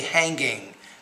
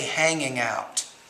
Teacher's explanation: from a pronunciation standpoint, hanging out, we don't really pronounce that G that much. We don't say hanging, but we say hanging out.